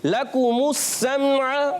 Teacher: کاف کا مخرج زبان کی جڑ تالو کے سخت حصے سے